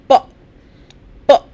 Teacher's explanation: you will notice that the two lips come together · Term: bilabial